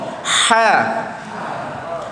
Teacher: Huruf ha kat mana makhraj dia? Di tengah rengkung.